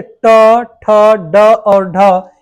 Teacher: मुर्धा से ट ठ ड और ढ ये क्या होते हैं हमारे मुर्धन्य व्यंजन